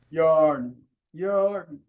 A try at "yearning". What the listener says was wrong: a little bit more yarn. We don't need an R in there. Just forget the R exists. Pretend like you're saying yearning but without the R. So yearning.